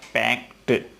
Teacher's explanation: पैक की second form पैक्ट, इसमें डे नहीं बोला जा करके बल्कि टैब बोला जाता है, पैक्ट। लिखा जाता है ED लेकिन बोला जाता है टैब, पैक्ट।